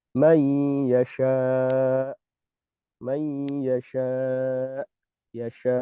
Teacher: kedua pita suara saat huruf ini dibaca sukun, huruf hamzah, itu akan menempel secara rapat. Menempel secara rapat sehingga tidak menyisakan ruang untuk suara mengalir. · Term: sifat syiddah